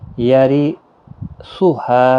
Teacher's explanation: یہاں پر را باریک پڑھا جائے گا زیر کی وجہ سے، یہاں پر مد منفصل ہے، تین الف کی مقدار کے برابر کھینچے۔